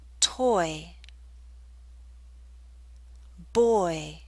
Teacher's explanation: we're using a slight Y sound y to make this Glide possible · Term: oi